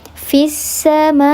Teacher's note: Samai artinya langit, maka masih dalam satu makna, satu arti, satu kata, namanya mad wajib muttasil, maka dibaca panjang 4 atau 5 harakat